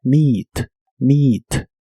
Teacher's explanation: La doble E de esta palabra se pronuncia como una I larga o doble.